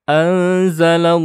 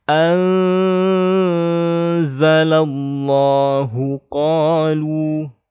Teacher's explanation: Kita ketemu nun sukun bertemu zai, ini adalah ikhfa, maka kita harus membaca dengan dengung ya. Anzala, tapi harus ditahan.